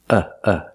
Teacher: It's not stressed you can call it a schwa but it's the same sound as uh in cup and up